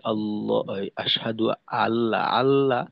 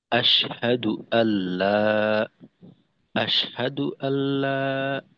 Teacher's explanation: হামজাটাকে একটু মজবুতির সাথে উচ্চারণ করা। যেমন যদি এইভাবে এখানে আমরা বলি আল্লাহ, আশহাদু আল্লাহ, আল্লাহ, অর্থাৎ হামজার উচ্চারণ আ এমন করি, তো ওই ক্ষেত্রে কিন্তু হামজা মাখরাজ থেকে উচ্চারিত হয় না, হলকের শুরুর থেকে অনেকটা উপরে চলে আসে। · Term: হামজা বিত তাহকিক